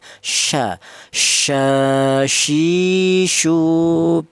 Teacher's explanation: Untuk huruf syin, huruf syin ini keluarnya huruf berasal dari ja sya ya. Itu keluarnya huruf berasal dari tengah lidah ya. Sya ya ini yang punya sifat tafasyi ya.